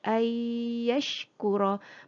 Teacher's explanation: Bunyi nun masuk di dalam ya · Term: idgham